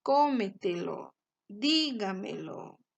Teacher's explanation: la sílaba tónica en la anterior a la antepenúltima sílaba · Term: sobre brújulas